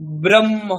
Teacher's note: যোগ হচ্ছে হকারের সংযোগ হচ্ছে সেইজন্যে আমরা উচ্চারণ করছি ব্রহ্ম মানে মকারের আগে উচ্চারণ পরে হকারের